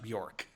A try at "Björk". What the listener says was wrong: Isn't it Björk? There's an umlaut in there. I thought it was Björk.